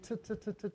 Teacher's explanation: make a unvoiced dental consonant where the tongue's right behind the teeth